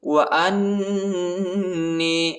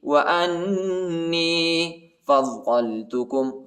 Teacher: حمزہ کو نون کے ساتھ ملائیں گے اور نون کو یا کے ساتھ ملائیں گے، ٹھیک ہے، اور نون پر غن نہ کریں گے